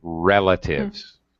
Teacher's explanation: relatives first syllable stress